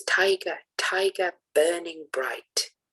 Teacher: the first syllable is stressed and then unstressed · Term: trochaic tetrameter